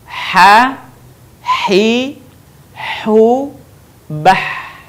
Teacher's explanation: Huruf ini dikeluarkan dari tengah tenggorokan kita. Ketika dilafalkan persis seperti kita melafalkan kata ayah, sah. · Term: huruf ha, huruf H